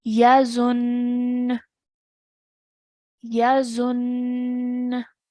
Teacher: Okay, now how we'll pronounce this is that we are still going to produce the gunna sound and we're really going to stress on the shadda. Okay, so what we're going to pronounce this as is yazun, yazun.